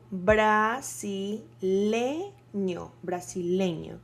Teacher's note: the stress of the word is in le, brasileño. So the emphasis, the stressed, the emphasis, and the most important, well, not the most important, but where you have to put all the strength of your voice is in le. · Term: sílaba tónica